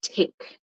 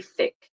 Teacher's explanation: remember TH, you have your tongue between your teeth. With the T, there's no tongue between your teeth.